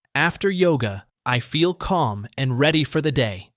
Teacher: Notice how you breathe after calm before you continue to and ready.